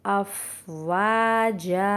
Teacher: अलिफ मद्दा है, यहाँ भी हम 2 काउंट्स खींचते हुए पढ़ेंगे